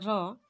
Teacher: है हम लोग देख सकते हैं जो लुंठित व्यंजन है र इसका उच्चारण करते समय जीवा ऊपर की तरफ मुड़ जाती है · र का उच्चारण करते समय जीवा में कंपन होता है अतः इसे प्रक पित व्यंजन भी कहते हैं यानी इस र